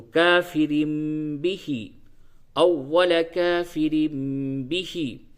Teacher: دیکھیے را دو زیر رن ہوتا ہے، لیکن اس جگہ پہ چھوٹا سا میم بنا ہوا ہے، یہ اقلاب کہلاتا ہے، اقلاب کی میم ہے. یعنی نون ساکن اور تنوین کے بعد جب بھی با آوے تو اس کو نون ساکن اور تنوین کی آواز کو میم سے بدل دیتے ہیں